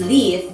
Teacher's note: At the beginning of a word, such as leaf, it is so-called clear L, sounding more like a front high vowel